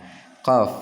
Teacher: Makhrajnya ialah pada pangkal lidah bagian atas ya